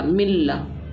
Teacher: ادغام بلا غنہ یعنی ہم نے بغیر غنے کے ملا کر پڑھا. میم لام زیر مل، لام زبر لا، ملا.